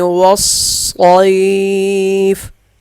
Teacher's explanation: واو کے ساتھ لکھا الف نہیں پڑھا جائے گا، صاد موٹا ہوگا